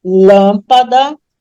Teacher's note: a anti penúltima é a mais forte lâmpada portanto ela é proparoxítona som fechado coloca o assento circunflexo